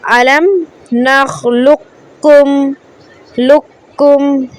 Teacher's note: मोटा काफ नहीं पढ़ेंगे, पतला काफ पढ़ेंगे